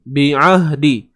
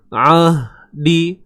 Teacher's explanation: Huruf ain tengah kerongkong tuan-puan. Huruf ha pangkal kerongkong. Okey. Ni tengah kerongkong, huruf ain.